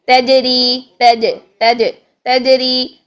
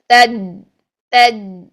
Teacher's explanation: ٹھیک، لیکن اگر ہم اس کی آواز کو بند کریں، مخرج صرف ادا کریں اور اس میں لائیں شدت، تج، تج، آواز فوراً بند ہو گئی ہے سختی کے ساتھ